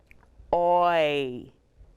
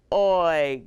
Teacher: when we make the oi sound, our mouths are rounded and we go into a slight smile.